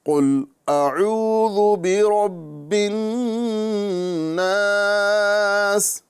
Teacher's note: قوف یہاں پر یہ حروف مستعلیہ میں سے ہے، اور اس کو ہم پر کریں گے اور صحیح مخرج کے ساتھ پڑھنے کی کوشش کریں گے۔